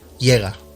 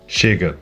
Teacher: Portuguese has some consonants that don't have an equivalent in Spanish. First, a sh sound, spelled with CH or with X.